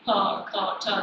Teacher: in stressed initial positions, there is aspiration in the consonants